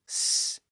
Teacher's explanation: you don't actually use your vocal folds the sound just flows through the windpipe unrestricted and the sound is actually made in the front part of